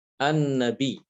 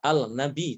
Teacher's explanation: Harus dibedakan dengan lam ta'rif. Kalau lam ta'rif ketemu dengan nun, maka dia memang dibaca idgham.